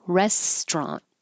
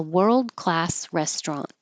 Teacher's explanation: It looks like restaurant, and according to the dictionary, we looked it up today, and that's not wrong, restaurant, but we usually drop that middle syllable and make it 2 syllables, so it's restaurant.